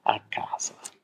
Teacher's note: in Wirklichkeit ist es Ad und es kommt zu dieser Assimilation und deshalb haben wir hier dieses lange K